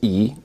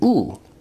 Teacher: remember that e is a high vowel but it's also a front vowel while u is a back vowel